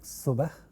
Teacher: For dental fricative or alveolar fricative, we have sa in a word like subah